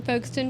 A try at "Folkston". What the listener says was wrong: you don't pronounce the L